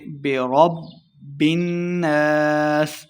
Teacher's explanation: نون مشدد پہ ہم نے غنہ کرنا ہے اور آخر پہ وقف کریں گے